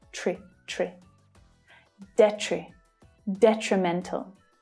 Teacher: But the second syllable is the most difficult here because of the consonant cluster tr, with an unstressed vowel sound, tree. So it's like the noun tree, but with a shorter, weaker vowel sound